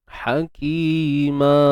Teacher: Kita gantikan sebutan man tu hakiman kepada ma dua harakat. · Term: ma'iwat